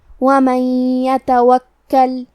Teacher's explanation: حرف الکاف پہ تشدید ہے تو ہمیں 2 حرف کے برابر کاف کو پڑھنا ہے